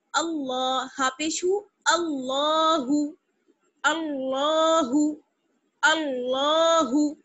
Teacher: لام کو موٹا ہم اس وجہ سے پڑھ رہے ہیں کیونکہ یہ جو حمزہ ہے اس پر زبر آ گیا ہے، اور یعنی الف جو ہے اس پر زبر آ گیا ہے، اس لیے اس کو ہم نے حمزہ پڑھا. زبر کی وجہ سے ہم اللہ کو موٹا پڑھیں گے